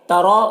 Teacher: رو کو پر پڑھیں گے، کھڑا زبر ہے، ایک الف کے برابر کھینچیں گے